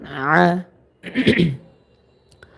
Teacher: দুই নাম্বার মাখরাজ হলকের মাঝখান থেকে আইন উচ্চারণিত হবে